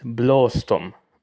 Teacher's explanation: The first O is long. The second is short.